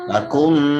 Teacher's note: Mim mati bertemu mim, suaranya masuk disertai dengung. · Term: idgham mimi